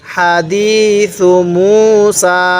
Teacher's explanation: এই হাটা উচ্চারণের সময় মুখ দিয়ে হালকা বাতাস বের করব